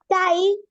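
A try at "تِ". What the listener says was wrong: তাই না, এটা ফাতা হলে হবে তাই, এটা তো কাসরা, তাহলে কি হবে? তি। সুকুন তো আমরা আগেই পড়ে আসছি, এখন শুধু সেই নিয়মে বানানটা সেম।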